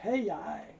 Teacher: Two vowel sound, so you get a little y stuck in there.